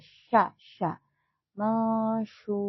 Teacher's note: Masyur, syur menggunakan huruf shin ya, jangan tertukar dengan huruf sa. Ini huruf shin. Dia ada sedikit udara keluar.